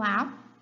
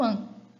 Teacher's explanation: aqui eu trouxe um som oral, o A, e um som nasal, o AN.